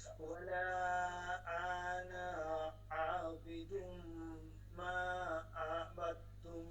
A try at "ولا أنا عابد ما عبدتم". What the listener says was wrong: ولا أنا তে টান দেওয়া যাবে না ولا أنا عابد ما عبدتم